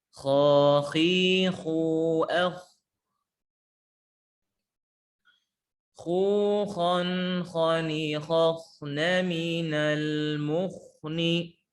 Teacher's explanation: huruf kha dan huruf ghain punya sifat tebal ya, punya sifat tebal isti'la, maka ketika dia sukun sebelumnya fathah maka dibaca tebal.